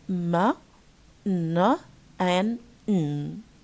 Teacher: We have 3 nasal consonants pronounced in different areas, but they share one way of pronunciation, which is air goes through the nose, and we cannot pronounce them if we close the nasal airway.